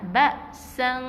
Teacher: Jadi kita sembunyikan bunyi nun tu. Jangan bunyikan nun tepat pada makhraj dia. Jangan bunyikan nun n tu.